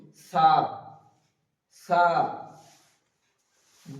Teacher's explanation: হালকা জীবের আগার দিক থেকে উচ্চারিত